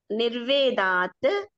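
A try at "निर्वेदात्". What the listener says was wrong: నిర్వేదాత్ తకారం అనొద్దు అన్న. నిర్వేదాత్ అంటే కర్వర్ణాలు అంటే మీకు 100 సార్లు చెప్పినా మీ అందరికీ అర్థం కావట్లే. వర్గ ప్రథమ ద్వితీయ వర్ణాలు ఉంటేనే ఇక్కడ ప్రథమ వర్ణం వాడాలి. చాచ టాఠ తాథ పాపాలు ఉంటేనే ఇక తకారం కచర్ తపలు వాడాలి.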